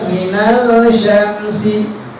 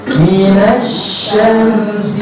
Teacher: jadi lamnya itu tidak disebutkan, tidak dibacakan langsung ke huruf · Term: alif lam syamsiyah